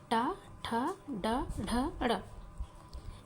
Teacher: ट वर्ग है ये ऊपर की ओर मूर्धन से बोला जाता है।